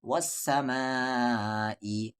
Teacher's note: وس، سین پہ زبر سا، وسا، میم کے ساتھ الف ما، وسما، مد کے سمبل کے بعد حمزہ ہے یعنی اس مد کو 3 سے 4 الف کے برابر کھینچیں گے۔